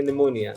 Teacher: please notice that the letter p is not pronounced in the word pneumonia